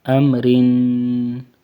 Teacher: حمزہ میم زبر ام، را دو زیر رن، را باریک پڑھنا ہے، ام رن، را باریک، ام رن، اور میم کے اوپر غنہ نہیں کرنا، ام پڑھنا ہے